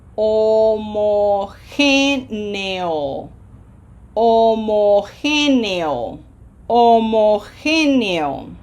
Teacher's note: We have a graphic accent. What does the H sound like in Spanish? Silent. The O is always closed.